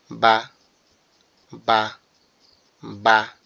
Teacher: বা এবং মিম এই দুইটা হরফ আমাদের সম্পূর্ণ ঠোঁট থেকে উচ্চারিত হয়। · বা হচ্ছে আমাদের দুই ঠোঁটের যে নরম জায়গাটা আছে নরম অর্থাৎ যেখানে একটু ভিজে ভিজে থাকে